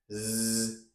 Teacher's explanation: Z is the voice. My vocal folds are vibrating, phonating, squeezing the air, vibrating. Z And you can hear the sound of the air being squeezed on my tongue tip. · My vocal folds are vibrating, phonating, squeezing the air, vibrating. Z And you can hear the sound of the air being squeezed on my tongue tip. And my alveolar ridge. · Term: fricative